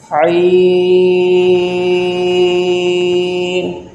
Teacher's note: یہ حروف حلقیہ میں سے ہے، اس کا مخرج حلق کے درمیان والے حصے سے یہ ادا ہوگا، عین، اس کی مقدار 5 الف ہے۔